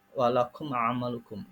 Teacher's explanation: ada mim mati bertemu dengan ain, walakum amalukum, itu namanya idhar syafawi